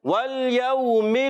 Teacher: واو ساکن سے پہلے زبر آ جائے واو لین ہوتا ہے. واو لین کو بغیر کھینچے نرمی سے پڑھتے ہیں